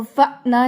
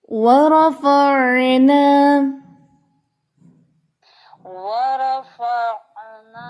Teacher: آگے ہے میثاقکم ورفعنا، عین جو ہے حلق سے ادا ہوتا ہے